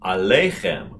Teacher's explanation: And the accent is on the second to the last syllable.